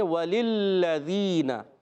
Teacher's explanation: پہلے لام کو دوسرے لام سے ملائیں گے کیونکہ دوسرا لام مشدد ہے، ذرا رک کر ادا کریں گے۔